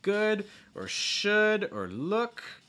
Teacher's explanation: should or look okay this uh sound what you're doing is you're raising the back of your tongue and you're lowering the front of your tongue